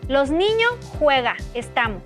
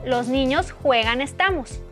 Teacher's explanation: Pérdida de S en el final de palabra